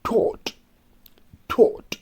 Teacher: for the word taught, we use the vowel sound O, rounded lips